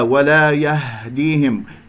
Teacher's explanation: الهاء الساكنة أحبتي في الله كما سمعتم باهتزاز الأوتار الصوتية في منطقة أقصى الحلق، لا تخرجها من الرئة